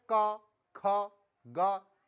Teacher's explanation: सीधा कंठ से आवाज निकलती है